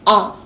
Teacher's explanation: आ के उच्चारण में मुंह सबसे ज्यादा खुलता है, ये कहलाता है विवृत स्वर